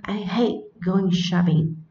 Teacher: Trọng âm nó phải rơi vào từ phủ định là từ hate